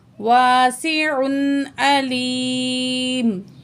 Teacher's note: تنوین کے بعد عین آ رہا ہے حروف حلقی میں سے، تنوین کو یہاں صرف ظاہر کر کے پڑھیں گے